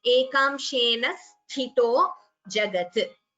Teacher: The first tha here is mahaprana, second is alpaprana. It should not be interchanged.